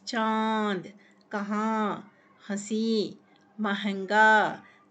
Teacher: हवा नाक और मुख से हवा निकलती है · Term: अनुनासिक